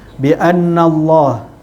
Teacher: Kemudian bi annallah itu anna tu nun itu adalah wajibul gunnah, didengung juga huruf nun selama dengan kadar dua harakat